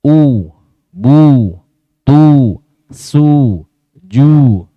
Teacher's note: Pada huruf yang berharokat dhammah ini tidak akan sempurna diucapkan kecuali dengan mengumpulkan atau memonyongkan kedua bibir.